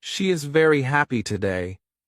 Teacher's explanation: If you stress she and happy, it sounds natural.